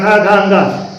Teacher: तो काखा गाघा अंगा का, इन सभी वर्णों का उच्चारण स्थान क्या है? कंठ है। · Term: का वर्ग